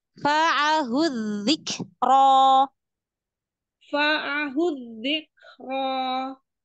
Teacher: Jadi kalau kaf sukun, berikan udaranya, aliran udaranya, hamsnya.